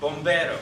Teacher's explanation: Your R in Spanish is a little bit more towards the D. You roll it. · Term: rolled R